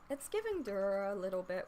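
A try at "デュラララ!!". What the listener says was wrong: When you say durara, enunciate. Yeah, instead of dura. Dura. Yeah, it was kind of more of a dura, which is unintelligible over recording.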